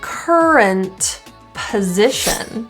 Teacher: we now have a word that starts with a consonant, so the T can be dropped.